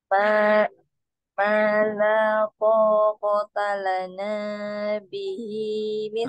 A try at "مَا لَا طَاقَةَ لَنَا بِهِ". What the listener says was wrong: Nah, na-nya kepanjangan, hati-hati. Nah, kepanjangan. Coba diayunkan biar lebih konsisten, Bu.